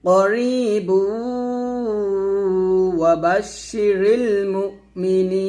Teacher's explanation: যদি মিলে পড়েন তাহলে করিবু হবে, এই বাগে ওয়াওকে ধরবে, করিবু, বা ওয়াও পেশ বু, এরকম মিলে পড়বেন। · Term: ইদগামে বা গুণনা